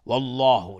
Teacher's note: لفظ جلاله استعلاست، غلیظ تلفظ میشه